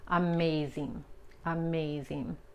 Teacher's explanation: Okay, la G es tan sutil cuando tenemos la ING al final de una palabra y la palabra es de más de una sola sílaba, la G casi ni se pronuncia